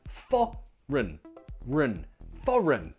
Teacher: Nope, the G is silent, it's foreign, foreign. Again, we have a perfect example of the first syllable being stressed, so the second syllable is weak, has the schwa sound. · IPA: /ə/